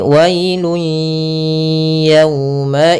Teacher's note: Maka hilang bunyinya, tapi dia masih menyisakan suara bunyi dengan gunnahnya. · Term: idgham bi gunnah